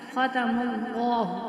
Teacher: اب ہم نے لام کو موٹا کیوں پڑھا ہے، کیونکہ لام سے پہلے حرف پر زبر آ گئی ہے، تب اس کو ہم موٹا پڑھتے ہیں۔